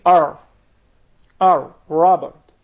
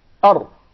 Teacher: But in Arabic, you gotta make sure that the tip of the tongue would hit the gum of the two top front incisors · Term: Arabic Ra